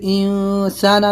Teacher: پھر انسانہ میں اخفا کرنا ہے، نون ساکن کے بعد سین ہے تو اخفا کرنا ہے